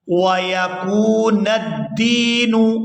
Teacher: یہاں دال کو یا ساکن کے ساتھ ملائیں گے تو کھینچ کر ادا کریں گے کیونکہ یہ یائی مدہ ہے